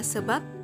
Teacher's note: bunyi B direalisasikan sebagai bunyi P apabila posisinya sebagai Koda